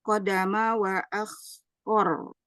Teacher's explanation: Huruf ro-nya dibaca tebal.